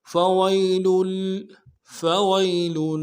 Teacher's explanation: یا لین بغیر کھینچے پڑیں گے